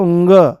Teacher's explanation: नाक के जो नथूने हैं उन पर जोर पड़ेगा हवा के ज्यादा बाहर आने से